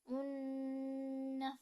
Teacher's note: en harakat pada ayat ketiga terdapat hukum bacaan idgam bunah yaitu tanwin bertemu dengan huruf nun maka dibaca melebur dan dengung